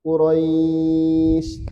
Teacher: ketika ada lin begini, lin layin lin bertemu juga dengan huruf yang sukun karena waqaf, maka linnya ini dipanjangkan 2 4 6